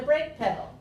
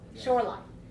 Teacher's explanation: when the first noun modifies or describes the second noun then we have high low